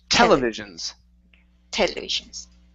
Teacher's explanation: the stresses at the very beginning